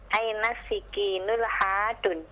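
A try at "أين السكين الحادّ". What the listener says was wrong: Dalanya pakai tanwin, ha al hadun, begitu?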